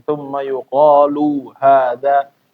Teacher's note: lu-nya pendek ya, lu-nya pendek. Jangan dipanjangin.